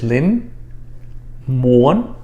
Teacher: it doesn't really have any meaning right one if you notice i kind of take the tone up a couple pitches